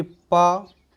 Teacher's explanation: जिन व्यंजन वर्णों को उच्चारित करते समय हमारे ओंठ आपस में मिलते हैं और जो हमारे मुख से हवा निकलती है उसका अवरोध करते हैं, वो हमारे ओष्ठ व्यंजन के अंदर आते हैं।